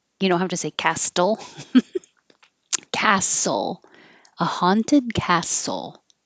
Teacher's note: And the same for castle. The TL, forget the T, just skip it.